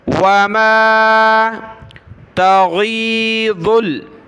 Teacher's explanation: गैन को गले से निकाला, ज़ाद को आगे लाम के साथ मिलाया, ज़ाद लाम पेश ज़ुल.